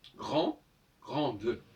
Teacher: Quand je dis grande, j'entends pas le E, en fait. Faut pas exagérer.